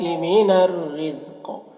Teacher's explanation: من الرزق را کو باریک پڑھیں گے اور قاف یہ حروف مستعلیہ میں سے ہے، اور وقف کی صورت میں قاف حروف قلقلہ میں سے بھی ہو جائے گا، تو اس طرح سے پڑھیں گے.